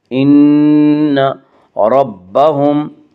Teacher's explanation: نون مشدد غنہ ہوگا، غنہ کی مقدار 1 الف ہے۔ ان ربهم، ربهم کی را کو پر پڑھیں گے، اس کا قاعدہ ہے کہ را کے اوپر زبر پیش ہے تو را کو پر پڑھا جائے گا، را کے نیچے زیر ہے تو را کو باریک پڑھا جائے گا، یا را کے اوپر زبر اس سے را کو پر پڑھیں گے۔